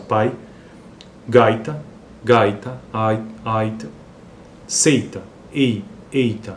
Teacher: se sobressai nesse caso pai gaita gaita Aita seita ei eita veja que o i é mais fraquinho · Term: semivogal